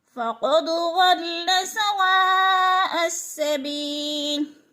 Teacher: حروف مدہ کے بعد حمزہ اسی کلمے میں ہے تو ادھر متصل ہے یعنی ملا کر پڑھیں گے اور 4 الف کے برابر کھینچ کر بھی پڑھیں گے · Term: مد متصل